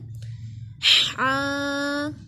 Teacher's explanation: ये दरमियाने हल्क से अदा होता है